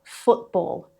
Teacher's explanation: Rule number 2, between a vowel sound and certain consonants. So when a t sits between a vowel sound and another consonant, the t can become a glottal stop.